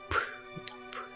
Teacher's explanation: 두 입술을 통해서 나는 음이라고 해서 양순음입니다. 그래서 위아래 입술을 붙여서 내는 음이죠